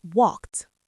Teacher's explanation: No vibration there. >> So for the past tense, the ed d turns into a sharp t. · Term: T sound